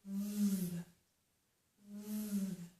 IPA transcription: v